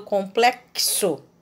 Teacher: Em complexo, o som do meu X representa o fonema KS.